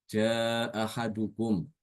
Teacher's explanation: harokatnya fathah dengan menghilangkan hamzah pertama